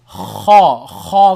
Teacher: gargling sound from the top of the throat